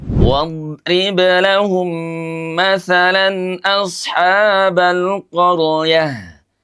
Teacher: Ya, maksudnya mengqalqalahkan huruf don. Kalau huruf ba memang seharusnya dipantulkan karena dia adalah huruf qalqalah.